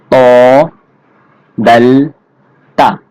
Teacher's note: সঙ্গে লাগাইয়া উচ্চারিত হবে র মোটা করে র 11 নাম্বার মাখরাজ জিহ্বার আগা সামনের উপরের দুই দাঁতের গোড়ার সঙ্গে লাগাইয়া উচ্চারিত হবে মোটা করে